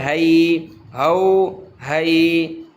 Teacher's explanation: گلے سے زور نہیں لگائیں گے ہا نہیں بلکہ صرف منہ سے ہوا نکالیں گے